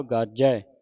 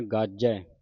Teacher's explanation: ਗਾਜੈ ਅਦਕ ਲਾ ਕੇ ਕਸ ਕੇ ਬੋਲਣਾ ਇਹਨੂੰ ਭਾਰਾ ਬੋਲਣਾ